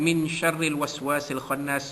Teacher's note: menyembunyikan bunyi nun mati bertemu dengan huruf shin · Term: ikhfa hakiki